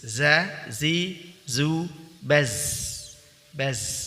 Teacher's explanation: Kemudian as-sofir, ada desisan ya. Sofir itu seperti keluar desis suara unggas ya.